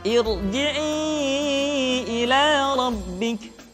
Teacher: ra sukun dipastikan dibaca dengan tafkhim manakala didahului oleh hamzah wasal